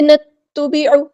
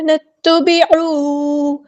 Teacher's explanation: دو حرکات یعنی 2 کاؤنٹس ہم اس کو لمبا کریں گے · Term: مد اصلی